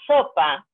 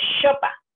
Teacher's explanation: esa es una distorsión de la S, le estás haciendo como una CH en inglés.